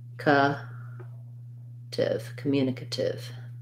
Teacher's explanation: So communicative has second syllable stress.